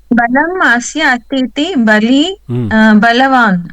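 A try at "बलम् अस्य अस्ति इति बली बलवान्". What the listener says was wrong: Correct. Bali balavan.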